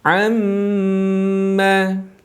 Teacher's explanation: gunnah ini harus dikeluarkan makhrajnya melalui rongga hidung kita, yaitu al-khayshum. Dan sempurnanya rongga hidung terisi penuh dengan suara tadi adalah dengan menahan suara, yakni 2 harokat.